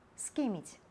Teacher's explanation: перад мяккімі «гі», «кі», «хі» асіміляцыі не адбываецца